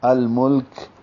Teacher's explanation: وآتاہ اللہ الملک، ہاں کو لام سے ملاتے ہوئے لام پہ اظہار کریں گے، پھر مل میں بھی لام پہ اظہار ہے اور کاف پہ ہمس ہوگا